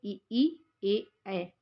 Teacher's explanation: जिन स्वरों के उच्चारण में जिह्वा का अग्रभाग सक्रिय रहता है उन्हें अग्रस्वर कहते हैं